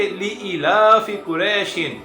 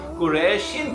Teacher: مد لین عارض میں حروف لین کے بعد عارضی سکون ہوتا ہے، یعنی وقف کی وجہ سے کوئی حرف ساکن ہو جاتا ہے، جیسے لِإِلَافِ قُرَيْشٍ۔ یہاں پر ہم عارضی سکون کی وجہ سے قریشین کی بجائے قریش پڑھیں گے